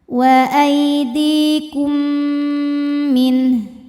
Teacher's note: karena mim sukun menghadapi mim, maka mim pertama lebur ke mim kedua disertai dengung. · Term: idgham mimi